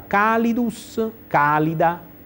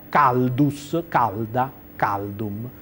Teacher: colonna di sinistra la cosa che unifica tutte queste parole è la caduta di una vocale breve nella penultima sillaba · per la caduta della iii breve nella penultima sillaba è diventata calda